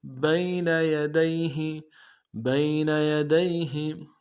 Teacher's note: بین میں با کو یا کے ساتھ ملانا ہے، یا لین بغیر کھینچے پڑیں گے. یدیہ میں بھی یہی ہے، سارے حروف ہیں نرمی سے ادا کریں گے.